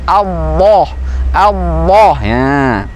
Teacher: Nah, al-lam, lidah tetap di posisinya, di makharijul hurufnya adalah ujung lidah di langit-langit, al. Nah, bagaimana mengucapkan tebalnya? Maka diangkat pangkal lidahnya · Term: lafzul jalalah